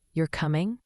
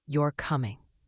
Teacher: A rising voice at the end often means a question. You're coming? A falling voice means a statement.